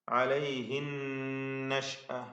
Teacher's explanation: അലൈഹിൻ നഷ്അ, അവിടെയും നൂൻ മുഷദ്ദദ വരുന്നു. ശബ്ദ നൽകപ്പെട്ട നൂൻ മണിച്ചുകൊണ്ട് ഉച്ചരിക്കുക.